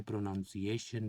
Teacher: پروناؤنسیشن بنیادی دباؤ A پر ہے اور ثانوی دباؤ NAN پر ہے